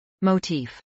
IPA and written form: moʊˈtiːf (motif)